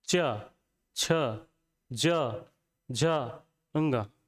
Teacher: चा वर्ग है, ये जो बोला जाता है, ये कैसे बोला जाता है? तालु से।